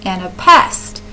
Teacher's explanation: So you have with an anapest, you have an unstressed, unstressed, stressed, so 2 unstressed syllables followed by a stressed syllable. And a pest is how that word would sound if you're stressing the syllables.